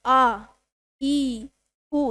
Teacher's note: जिनके उच्चारण में दो मात्रा का समय लगे वो क्या कहलाते हैं? दीर्घ स्वर कहलाते हैं।